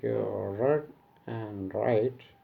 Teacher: in words like read and write, there is no friction, so it is frictionless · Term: frictionless continuance